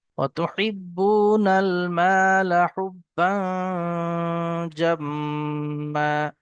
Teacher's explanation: এখানে তানবিনের পরে জিম এসছে একবার 15টি অক্ষরের মধ্যে থেকে, তাই গুণনা হবে।